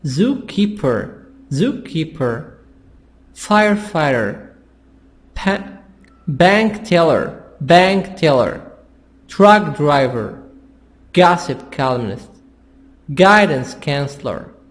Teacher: So here we have different compound nouns and the stress is on the first noun. We say zookeeper, firefighter, bank teller, truck driver, gossip columnist, guidance counselor.